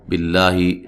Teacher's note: لفظ اللہ کو باریک پڑھنا ہے، اس سے پہلے زیر ہے